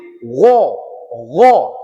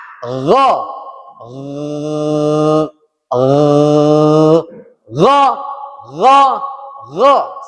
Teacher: Dan cara pengucapannya dianjurkan mulut atau bibir tidak ikut-ikut. Jangan ikut monyong bibir wo, tidak, bibir tetap mengangah.